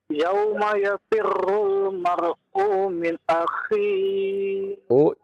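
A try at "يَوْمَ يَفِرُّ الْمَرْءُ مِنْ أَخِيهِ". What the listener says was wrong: U-nya jangan dipanjangkan. Yauma yafirrul mar'u min akhi.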